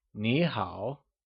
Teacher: So remember, as an informal greeting, hello translates to ni hao, where both ni and hao are said in the falling rising tone, like ni hao, while a formal hello translates to nin hao, with a mid-rising tone on nin and a falling rising tone on hao.